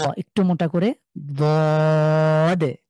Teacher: জিভের এক পাশ আমরা মাড়ির দাঁতে গোড়ার সাথে লাগিয়ে দ, একটু মোটা করে দে। এটাকে আমরা যদিও বাংলা দ দেখতে পাচ্ছি, সরাসরি দ বলবো না আমরা, ঠিক আছে?